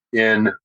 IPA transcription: ɪn